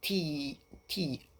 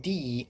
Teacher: the only difference is the action of the vocal cords